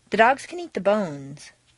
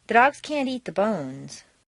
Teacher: Reduce the positive can to kun and stress the verb. Make the negative can't sound very short and stress both can't and the verb.